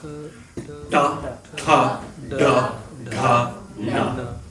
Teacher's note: The term retroflex is useful because that's what the tongue does. The tongue pulls back, retro, and it flexes. It hits the roof of the mouth.